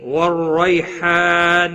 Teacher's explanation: نہیں، والریحان رو زبر کی وجہ سے پر پڑھا جائے گا، روی یا لین ہے تھوڑا نرمی کے ساتھ کھینچ کر ادا کریں گے